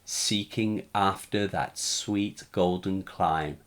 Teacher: the assonance of the long e sounds combines with the sibilance seeking and sweet